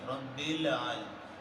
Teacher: لام کو آپ نے باؤنس نہیں ہونے دینا جو کہ حروف قلقلہ میں سے نہیں